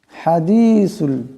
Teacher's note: এখানে বড় হাস আওয়াজটা গলা থেকে আনতে হবে